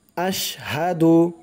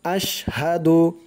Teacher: হামজা দিয়ে শিন ধরবে, আওয়াজটা শক্ত করতে হবে